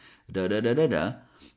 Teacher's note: We can pronounce a flap T, which is that T sound we pronounced with the tip of the tongue in a very relaxed way. Da da da da da. · It almost sounds like a fast d sound plus a schwa sound